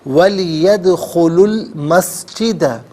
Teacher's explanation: لام ساکن کے ساتھ ملائیں گے اور درمیان سے الف یعنی حمزہ کو حذف کیا جائے گا